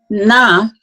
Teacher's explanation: na is a dental nasal sound